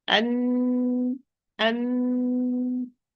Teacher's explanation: So he had to go back and run from the nasal cavity producing the [Music] and and so the mouth part is completely closed but the nasal cavity part is open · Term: noon